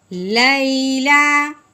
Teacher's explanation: یا ساکن سے پہلے زبر آئے اس کو لین کہتے ہیں. لین کو درمی سے پڑھتے ہیں، کھینچ کے نہیں پڑھتے